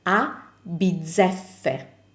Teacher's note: And for the double F, just keep the sound of the F a little bit longer and you will have your double F sound.